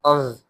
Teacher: While reading Za, the tip of the tongue will touch the edge of the top front teeth.